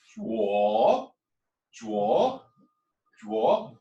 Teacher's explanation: The third one goes down and up.